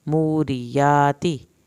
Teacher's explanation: را کی زیر کو لمبا نہیں کرنا